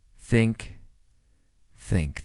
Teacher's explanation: Put your tongue gently between your teeth and blow air out for the TH in think.